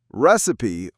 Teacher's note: Recipe, on the other hand, has 3 syllables. Receipt, 2. Recipe, 3. We stress the first one